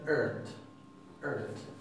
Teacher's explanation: La RT a menudo se va a pronunciar con lo que se llama una R retrofleja, que es la R del inglés.